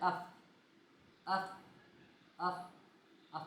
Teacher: आपके ऊपर वाले जो दांत है वो नीचे वाले होठों के ऊपर लग रहे हैं। जिससे मालूम हो गया कि अफ का मखरज ये है फ का मखरज।